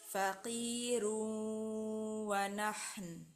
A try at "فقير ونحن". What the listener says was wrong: এবার ঠিক আছে।